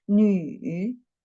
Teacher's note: The third tone, when we read the third tone, we should down at first and then raise up